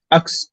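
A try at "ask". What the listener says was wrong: এখানে আক্স যদি হয় তাহলে খে, এই খে এর উচ্চারণটা আগে আসছে, আক্স এস এর উচ্চারণটা পরে আসছে, কিন্তু এসটা আছে আগে। হ্যাঁ, এসটা হবে আগে। আস্ক, আস্ক, আস্ক,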